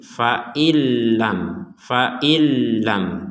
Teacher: Seakan-akan nunnya hilang, kemudian diperkuat dengan adanya tasdid, seakan-akan langsung fa hamzah langsung ke lam, nggak ada nun sukunnya seakan-akan. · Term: dimasukkan ke lam